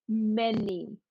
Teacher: Bien l'accent tonique sur la première voyelle, OK? Et pas sur la deuxième partie, sur la seconde partie du mot.